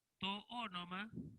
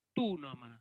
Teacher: Las dos ómicron se fusionan y dan como resultado el diptongo que, recuérdenlo, se pronuncia U